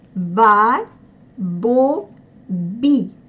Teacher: согласные звуки произносятся напряженно. Они не оглушаются. Даже в слоге Би, где звук «и» мог бы смягчить предыдущий согласный, как у нас в русском языке это происходит, мы говорим «мягко», «би».